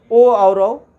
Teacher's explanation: कंठ वर्ग और ओष्ठ वर्ग को मिलाया गया तो ये कंठोष्ठ हो गया और इसके 2 वर्ण हैं, ओ और औ